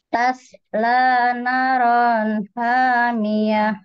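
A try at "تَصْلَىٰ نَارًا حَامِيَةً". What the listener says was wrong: Naknya kurang panjang, Bu.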